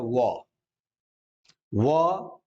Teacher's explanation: व दांत और ओठ के मिलने से